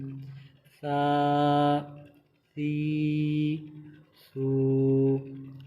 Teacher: یہ تینوں حروف جو ہیں رال، واو اور سا، تینوں کا مخرج ایک ہے، یعنی ایک ہی جگہ سے ادا ہوتے ہیں۔ زبان کا سرا اور اوپر والے دانتوں کے اندرونی کنارے سے یہ تینوں حروف ادا ہوتے ہیں، ان تینوں میں ہی سیٹی کی آواز نہیں نکالیں گے